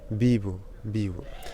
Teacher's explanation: Mais donc le V se prononce V, c'est entre le B et le V, mais lorsque ce V est à l'initiale devant un I, par exemple, il se prononce B